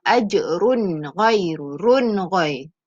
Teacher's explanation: Ni kena baca jelas sebab ada tanwin bertemu ghin. Ghin ni huruf izhar halqi.